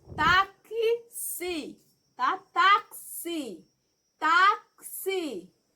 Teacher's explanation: Observe que o som do X é como se fosse 2 letras, tá? É como se fosse um som do K com um S